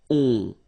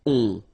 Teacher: it's a nasal and it goes in your nose and it goes like on. All right, so you don't hear any N, so it's really on